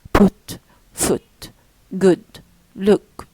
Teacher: high means close, and back, and rounded